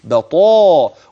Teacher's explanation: والتفخيم الطاء في اعلى مراتبها